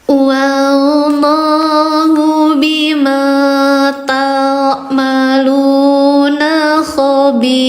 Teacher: i-nya empat dibaca panjang empat harakat